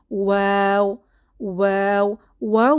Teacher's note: আর ওয়াও যখন আমরা উচ্চারণ করব তখন আমাদের মুখের পজিশন এই যে আঁকা ছবির মতো রাউন্ড শেপ হয়ে যাবে, মুখ গোল হয়ে দুই ঠোঁট গোল হয়ে পাশ হয়ে ওয়াও উচ্চারিত হয় এবং আমাদের ঠোঁট ফাঁকা থাকবে